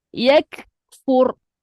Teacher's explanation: mati pada ra pastikan dia bergetar